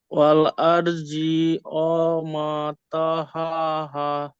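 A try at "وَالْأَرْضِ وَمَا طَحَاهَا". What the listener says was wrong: ওয়াল আরদি টান হচ্ছে, দি টান দেওয়া যাবে না। ওয়াল আরদি, ওয়া মা টান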